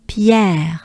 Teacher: so it's accentuated on the air Pierre just like the air you breathe with a French accent